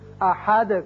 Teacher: یہاں آیت ختم ہوتی ہے لہذا دال ساکن ہو جائے گا اور اس کی صفت قلقلہ ادا کریں گے. احد کر کے پڑھیں گے.